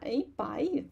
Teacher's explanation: Yi bai, third tone, e also change to a falling tone